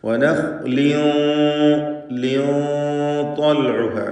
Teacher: അതേപോലെ നഖ്ലീൻ എന്ന ഖാഇനും തഫ്ഖീമാണ്, ഇസ്തിഅലാന്റെ ഹർഫാണ്. വനഖ്ലീൻ എന്നതിലെ തൻവീൻ ശേഷം ത്വാ വന്നതുകൊണ്ട് ഇഖ്ഫാ ഹഖീഖി നൽകി മറച്ച് മണിക്കുക. മണിക്കലിൽ തഫ്ഖീമാണ്, കാരണം ശേഷമുള്ള ത്വാ ഇസ്തിഅലാന്റെ അക്ഷരമാണ് എന്നതുകൊണ്ട് വനഖ്ലിൻ ത്വൽഉഹ എന്ന് ഉച്ചരിക്കുക.